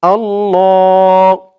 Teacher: জবর উঠে গেছে তো এখানে খাড়া জবর পড়বেন এক আলিফ টান দিয়ে পড়বেন